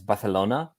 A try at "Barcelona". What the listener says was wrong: Your pronunciation of Barcelona is pronounced in the Spanish way. I think Catalan would say Barcelona.